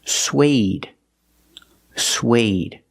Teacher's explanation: not Swede not sweat but suede using the long a like day and say